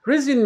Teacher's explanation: resume is a verb it means to start doing something again after a break or stop the final e is silent the stress is on the second syllable